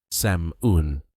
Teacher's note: This one is very tricky because the spelling has a silent L. Many learners say salmon, but the L is never pronounced. The correct pronunciation is sam-un.